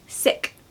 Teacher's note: make sure you do a short I there so that it doesn't sound like seek